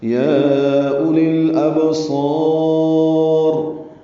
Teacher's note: با ساکن پہ قلقلہ ہے